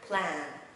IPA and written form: plæn (plan)